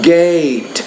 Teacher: you're not making the a long enough